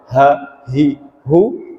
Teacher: Huruf ha besar itu atau ha itu terasa di dada kita. Ketika kita menyebutkan huruf ha, baik dia sukun, dia fathah, dia kasroh atau dia dhammah, ha, hi, hu, terasa di dada kita itu seperti bergetar.